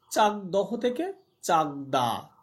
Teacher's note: দেখো এখানে ঘোষ ধ্বনি দয়ের প্রভাবে, যে দহ দয়ের প্রভাবে, অঘোষ ধ্বনি ক, মানে যে ক চাক ক, পরিবর্তিত হয়ে ঘোষ ধ্বনি গয়ে পরিণত হলো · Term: ঘোষী ভবন